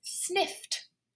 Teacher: f is just using the teeth and the breath. So it's an unvoiced consonant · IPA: /snɪft/